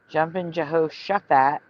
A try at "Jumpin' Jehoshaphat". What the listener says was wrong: You don't pronounce the H.